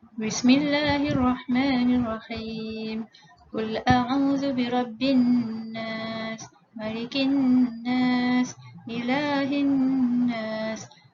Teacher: Cara bacaan wajibul gunnah adalah dengan menekan suara pada huruf mim dan nun disertai dengan dengung sekadar 2 harakat.